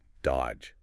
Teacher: You don't say that middle D at all. It's just dodge. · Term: Completely silent